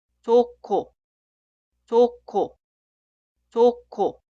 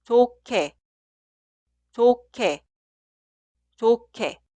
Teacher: En este caso suena 히읗 y 기역 juntos en un sonido 키읔. y funciona como consonante inicial de la sílaba posterior.